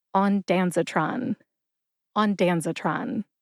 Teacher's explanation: Emphasize Dan. See if you can hear that emphasis when I say it again.